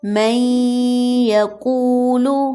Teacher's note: first word ہے من یقول، نون ساکن کی ہلکی سی آواز رہ گئی ہے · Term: غنہ